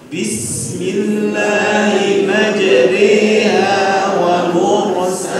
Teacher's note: yang dimaksud dengan imalah antara fathah bacaannya dan kasrah antara fathah dan kasrah